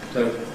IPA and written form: ˈtəʊtl̩ (total)